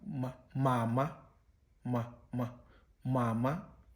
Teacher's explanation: labial in this instance means bilabial, meaning engaging both the upper and the lower lip in the production of the sound. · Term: bilabial nasals